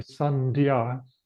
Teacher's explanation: So before a D, it becomes an N.